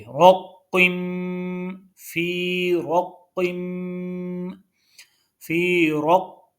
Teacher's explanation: اب روقم را اور قوف دونوں کو پر پڑھیں گے، موٹا پڑھیں گے، اور قوف کو آگے میم کے ساتھ ملائیں گے